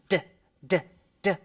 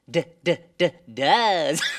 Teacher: My vocal cords. That's right. They vibrate when you make the D sound.